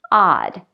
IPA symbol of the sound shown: a